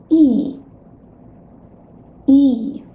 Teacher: For sound E, the tongue is most forward of all three sounds, and the tip of the tongue touches lower teeth. Also, the lips are spread as if you were smiling.